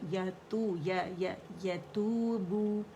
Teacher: یا کے لیے آواز ایک کاؤنٹ کے لیے اوپر جائے گی، یا کے مخرج پہ جائیں گے